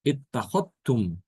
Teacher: Itu pada kata ittakhadtum, ittakhadtu, ittakhadta. Di situ Imam Syu'bah mengidghamkan dal ke ta, diidghamkan.